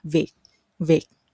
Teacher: the T ending at the end of every word is more like a K ending, viet viet. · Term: Southern dialect